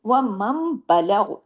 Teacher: बा आया तो यहां भी कौन सा कायदा लगा इकलाब का तब्दीली हो गई नून की आवाज मीम में बदल गई